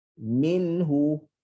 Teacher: Okey, minhu. Okey, nun mati yang kita kena sebutkan bunyi dia, maka pastikan ada lepasan suara cuma pendek je.